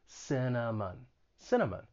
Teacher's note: it has three syllables the stress is on the first syllable the second and third syllable have that schwa sound it's an unstressed vowel sound just sounds like a cinnamon cinnamon